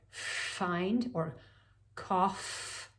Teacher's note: we have the th sound as in think and oh so the f was formed by the upper teeth sitting down on the lower lip